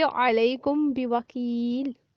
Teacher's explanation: میم ساکن کے بعد با آ جانے کی صورت میں میم ساکن کو اس کے مخرج سے چھپا کر پڑھنا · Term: اخفائے شفوی